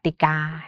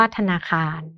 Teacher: คำยืมจากภาษาบาลีสันสกฤตที่มีรูปพยัญชนะแล้วไม่มีสระกำกับเนี่ยเราจะอ่านออกเสียงเหมือนมีสระอะกำกับนะคะ